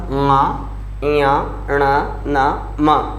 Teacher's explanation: प्रत्येक वर्ग का 5वां वर्ण नाक की सहायता से बोला जाता है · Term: नासिक के व्यंजनों